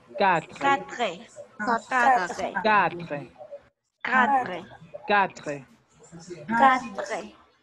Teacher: Háganme cuenta que van a decir quatre del español, ¿sí? Quatre, pero con acento francés, sin pronunciar la última E y con acento francés, la R.